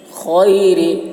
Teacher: خا کی آواز موٹی ہوگی، را باریک ہوگی